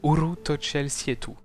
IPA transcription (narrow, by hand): u'ru to't͡ʃel sje'tu